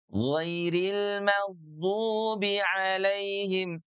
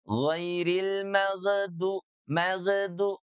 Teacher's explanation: Dan ingat huruf ghain kalau disukunkan atau sukun dia tidak ada qalqalahnya loh yang keluar ya. Jadi tidak mantul.